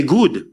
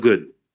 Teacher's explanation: in the Saint Lucian accent, in Saint Lucian speech, we tend to select tense vowels where a lot of other speakers select lax vowels